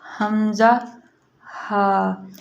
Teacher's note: یہ جو ہے ہمارے سینے کی طرف حلق ہے، اس سے ادا ہوتا ہے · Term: اقصی حلق